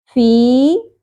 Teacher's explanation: حرف مدہ ہے، 1 الف کے برابر کھینچیں گے۔